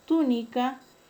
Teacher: El término túnica lleva la mayor fuerza de voz en la antepenúltima sílaba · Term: esdrújula